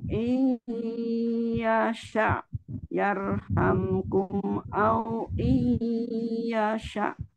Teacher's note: Idgham bi gunahnya dimasukin dengan dengung ya Um ya.